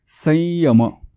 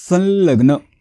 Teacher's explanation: ल आलाय म्हणून इथे टिंबाच्या ऐवजी अनुनासिक ल चा वापर करायचा आहे